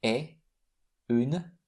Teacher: we never pronounce the T at the end